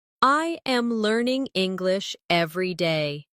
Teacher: Notice how my voice rises slightly on learning and falls at the end on day.